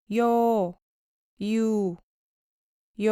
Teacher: เมื่อออกเสียงสระโยให้ออกเสียงสระอีสั้นๆและออกเสียงสระโอยาวๆต่อเนื่องและพร้อมๆกัน